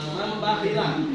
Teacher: Nah, nunnya menjadi mim karena nunnya bertemu dengan huruf ba ya. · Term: iqlab